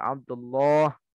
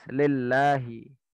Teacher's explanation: Dan tebalkanlah huruf lam pada lafaz Allah. Bila sebelumnya lafaz tersebut terdapat huruf berharokat fathah atau dhammah.